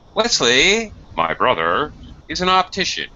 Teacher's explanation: Okay, when we have this added information, we sometimes do this as well with parentheses. This is very natural when we're speaking to drop our voice remarkably low when we're giving this extra information.